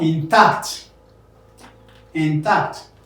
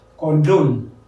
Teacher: Stressing 2-syllable words with the second syllable stressed.